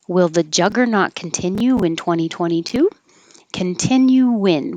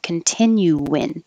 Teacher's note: when you say continue your lip should go forward for an oo and then come back for the n and it'll make an invisible w